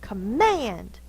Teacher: It's actually the schwa because it's in the unaccented syllable, because if our dog was named Command, we'd go command. So mand is the stressed syllable. This is the unstressed.